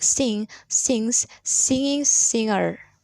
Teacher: there is usually no g sound in words like sing sings singing singer